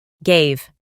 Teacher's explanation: La A se transforma en EI